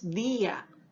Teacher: porque al estar tildada la vocal cerrada quiere decir de que nosotros la vamos a pronunciar con la misma intensidad articulatoria que tiene una vocal abierta por lo tanto fonéticamente va a tener la misma intensidad y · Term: hiato